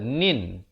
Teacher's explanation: izhar halqi dibacakan dengan jelas saja, nin, tanpa dipanjangkan